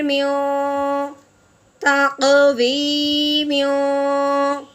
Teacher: تنوین پہ اخفا کا غنہ کریں گے